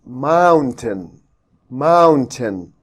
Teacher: we have to stress on the first syllable here and say it aloud